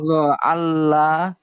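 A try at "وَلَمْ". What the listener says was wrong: আল্লাহ না, আমি কি ওয়াল ল, আল্লাহ কেন, এখানে হামজা আছে নাকি?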